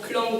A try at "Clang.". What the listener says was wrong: Non, pas de suite. T'as compté 1, 2. C'est pas vrai, ça.